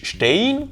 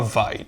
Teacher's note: La diphtongue ei /aɪ̯/ équivaut au yiddish ey /ɛɪ̯/ ou ay /ɑɪ̯/. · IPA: /ˈʃtɛɪ̯n/